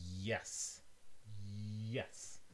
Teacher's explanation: English has another approximant, the J in yes, yes. You have your palate and the body of your tongue, and it almost makes contact with it, but not quite.